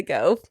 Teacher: That's a fronted back vowel, which is also a part of the California vowel shift.